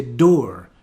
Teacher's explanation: instead of door i would say door pronouncing the r